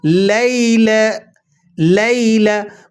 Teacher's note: یا ساکنہ سے پہلے زبر ہو تو یہ یا لین کہلاتی ہے، اور اسے نرمی کے ساتھ ادا کیا جاتا ہے